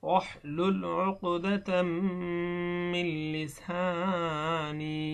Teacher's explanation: এখানে তানবিনের পরে মিম আসার কারণে এখানে গুণনা হয়েছে, এটা হলো ইদগাম, নুনে সাকিনের ইদগাম।